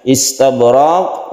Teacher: kemudian qafnya karena waqaf menjadi qalqalah kubra